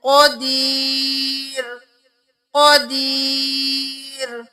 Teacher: قوف کو موٹا پڑھیں گے